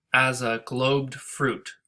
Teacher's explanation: Globed fruit, that's where the stress is in that line. As a is not stressed.